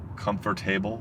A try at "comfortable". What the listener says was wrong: No, you make comfortable. You make comfortable have 100 syllables.